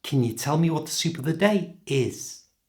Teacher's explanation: because this is a yes-no question, it means it can be answered yes or no, my pitch goes up at the end